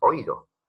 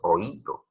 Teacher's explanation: En oído tú no dices oído, tú dices oído. Suena más la vocal cerrada, entonces se separan en sílabas distintas y se tilda. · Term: hiato